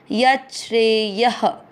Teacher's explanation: य पूरा, यत श्रेय। य में अ की मात्रा तो विसर्ग को पढ़ेंगे ह